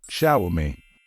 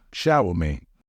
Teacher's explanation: The stress should fall on the first syllable.